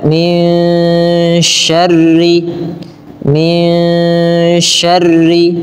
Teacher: nun ketika bertemu dengan syin suara nunnya tidak diperjelas tapi disamarkan kepada huruf syin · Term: ikhfa